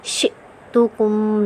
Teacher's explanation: حمزہ کو کیا کریں گے ہم جھٹکے سے پڑھیں گے کیونکہ حمزہ ساکن حالت میں ہے